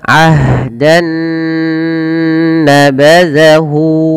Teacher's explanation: masukkan nun yang pertama kepada nun yang kedua, maka diidghamkan, maka dinamakan dengan idgham bi gunnah. Nah, kemudian ditahan dengan gunnah.